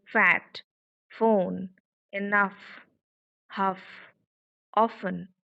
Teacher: So number three, the sound pronounced like, and this while uttering the sound, there is no vibration. Vocal folds are not vibrating here while uttering the sound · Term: voiceless sound